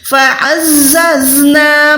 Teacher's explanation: زا ز کی آواز آتی ہے وہ زا ہوتی ہے. یہاں پر ہم نے وسل ساؤنڈ یعنی سیٹی کی آواز نکالنی ہوتی ہے